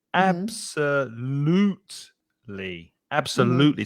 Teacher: we've got four syllables there absolutely absolutely so it's the third syllable that has the stress